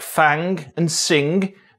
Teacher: they stopped saying the g at the end and were left with just the velar nasal ŋ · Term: NG coalescence